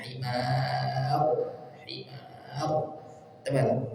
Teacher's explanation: karena sebelumnya adalah Alif dan fathah panjang maka rnya dibaca tebal